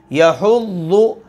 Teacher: اسی طرح دیکھیے ولا یحض، حا آ گئی، یا کے بعد حا، یحض، حا حلق کے درمیان میں سے ادا ہو رہی ہے لیکن گلا گھٹنے نہ پائے، اس انداز میں اس کو اللہ کی توفیق سے ادا کرنا ہے۔